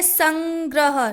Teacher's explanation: न की आवाज आई हल्का सा न की आवाज आई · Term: अनुस्वार